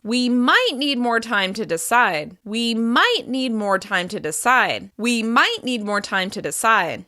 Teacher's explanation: Stressing might suggests that there's the opportunity to work together